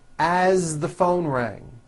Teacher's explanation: As, you pronounce it with a voiced Z.